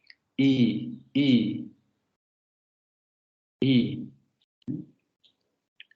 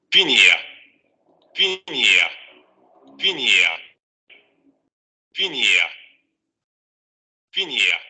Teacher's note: La lengua va a subir hacia la zona anterior. Va a ser una vocal cerrada, por lo tanto, vean cómo la boca se cierra a lo máximo que se puede cerrar con relación a una vocal, y obviamente va a haber vibración de cuerdas vocales.